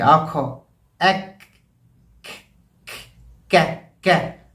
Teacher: जो hard palate है वहाँ पर आपकी ज़बान ऊपर जाकर लगना चाहिए, जिससे काफ का सही मखरज अदा होगा